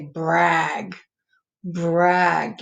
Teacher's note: you don't really hear the b that much the r